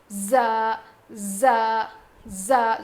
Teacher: زبان کی نوک کو نیچے کے دانتوں کے جڑ میں لگانے سے ادا ہوتا ہے. مطلب پورا جڑ میں نہیں لگائیں گے, بس تھوڑا سا ٹچ کریں گے.